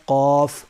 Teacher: اس کے بعد ہے قاف، بڑا قاف دو نقطوں والا، یہ پر ہے، یہ قاعدے میں آیا تھا قاف کا ثانی کاف یعنی چھوٹا کاف، تو یہ دونوں سیم لگتے ہیں بولنے میں اور بعض حضرات بول بھی دیتے ہیں، لیکن قاف یہ پر ہے، موٹا پڑھا جائے گا، حلق سے نکلے گا، اور کاف یہ سمپل باریک ہے۔